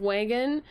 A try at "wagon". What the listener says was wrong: Maybe it's the way you pronounce wagon that sounded weird. It sounds like you're saying wangin. Like wang?